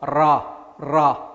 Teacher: 혀가 입천장에 붙었다 떨어졌다 붙었다 떨어졌다를 막 반복하면서 떨리는 이런 소리가 날 때가 있습니다. 그 알발음, 이걸 설전음이라고 한다.